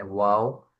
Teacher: دونوں ہونٹوں کو گول کرنے سے واؤ ادا ہوتا ہے